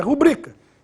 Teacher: oficialmente essa palavra é paroxítona, ou seja, a pronúncia oficial é rubrica. Em razão disso, não deve ser acentuada.